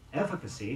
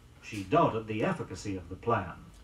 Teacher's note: in the word efficacy e FF IC a CY the stress is on the first syllable